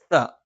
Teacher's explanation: നാവിന്റെ മധ്യഭാഗം മേലെ അണ്ണാക്ക് ദ നാവിന്റെ അറ്റം മേലെ മുൻബല്ലിന്റെ മുരട്ടിലാണ് സ നാവിന്റെ അറ്റം മേലെ മുൻപല്ലിന്റെ താഴ്ഭാഗം